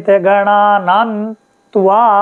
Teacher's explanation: ग ग को थोड़े में बोलेंगे ग ण में बड़ा करेंगे क्योंकि आ की मात्रा है